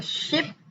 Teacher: the blade of the tongue is arched near the alveolar area with a simultaneous approximation of the front of the tongue toward the hard palate